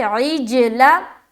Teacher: سکون ہے، اور جیم حروف قلقلہ میں سے ایک ہے، میں نے بتایا تھا نا، قاف، طا، با، جیم، دال، تو جیم بھی ہے تو عین کو جیم سے ملائیں گے اور کریں گے قلقلہ